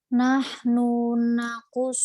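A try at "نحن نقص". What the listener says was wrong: pendek. Nahnu nakus.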